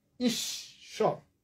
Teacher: এখানে তালব্য শয়ের সাথে বফলা ছিল, তালব্য শ 2 বার হয়ে গেল